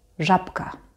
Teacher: So remember if B is next to a voiceless consonant that it becomes P.